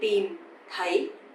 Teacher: But the second one, TH, sounds like the, a bit softer, right? So tìm is dấu huyền, you have to go down, and thấy, dấu sắc, you have to go up.